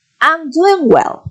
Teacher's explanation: the voice falls at the final of the of the phrase. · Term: intonation